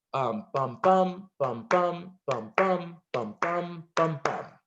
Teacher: And really what that rhythm is very basically was stressed, unstressed, stressed, unstressed, stressed, unstressed, stressed, unstressed, stressed. So it just repeats, right? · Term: iambic pentameter